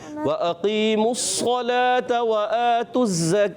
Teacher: इसी तरह वअक़ीमू, जब हम वफ़ करेंगे तो वाव मुद्दा बन जाएगा, ठीक है, इस चीज़ का खास ख्याल रखना है। और जब मिलाएंगे तो ये वाव मुद्दा हज़फ हो जाता है, ख़त्म हो जाता है।